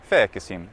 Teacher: So what it was in a very archaic form of Latin was fēc, sim, and then a little epenthetic vowel, a little schwa was put in between. So it was something like fēcesim.